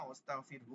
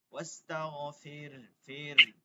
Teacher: শেষে একটা হায়ে জজম হবে, একটু গম্ভীর আওয়াজ হবে, ঠিক আছে? এই যে যখন শুনাইলেন এরকম হয়েছে না, ওয়াস্তাগফিরহু বলছেন, এরকম হবে না কিন্তু।